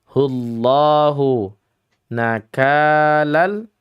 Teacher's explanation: Hullah adalah lam taghlidh karena sebab dhammah bertemu lafzun jalalah. Maka al-jauf atau rongga mulut hendaknya ditebalkan.